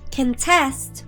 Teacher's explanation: Contest, with the second syllable stressed, is a verb.